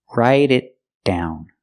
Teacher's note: Link together with the D and down.